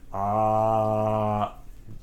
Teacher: It's completely open, the vocal apparatus wide open.